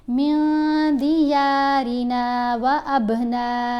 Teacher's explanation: پھر اخفا کریں گے نون کے اوپر, کیونکہ نون ساکن کے بعد دال ہے, دال بھی حروف اخفا میں شامل ہے, تو ہم پڑھیں گے من دیارنا و ابنائنا. با کے اوپر کلکلا اور نون کو 5 الف جتنا لمبا پڑھا